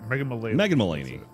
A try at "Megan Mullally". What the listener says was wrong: I think it's pronounced Mullally, and that's why it was confusing me. It's not Mullaney. It's Mullally.